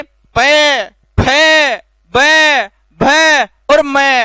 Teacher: पांचों वर्णों में दोनों होठों का स्पर्श होगा, इसलिए इन्हें ओष्ठव नाम दिया जाएगा।